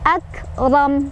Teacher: Wa rabbukal Di sini kafnya punya sifat hams, jadi ada angin keluar sedikit ya